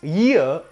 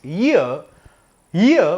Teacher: the first sound is not e the first sound is ya it's ya and then comes e